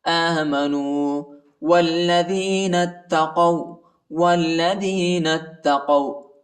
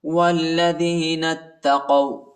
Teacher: نون کو تا کے ساتھ ملائیں گے، تا کو شدت کے ساتھ سختی کے ساتھ پڑھیں گے